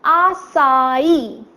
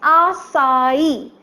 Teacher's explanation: the third syllable is plain e but slightly higher in pitch